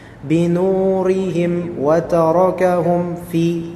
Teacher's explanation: juga izhar syafawi untuk mim ketemu dengan fa.